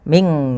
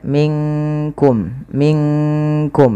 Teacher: dia nunnya samarkan ke kaf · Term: ikhfa